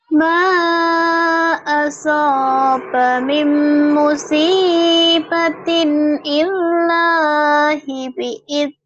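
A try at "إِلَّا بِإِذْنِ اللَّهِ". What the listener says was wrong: Kenapa ada ilahi? Enggak ada. Illa bi'idnillah.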